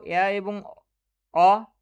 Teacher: নিম্ন মধ্য স্বরধ্বনি দুটো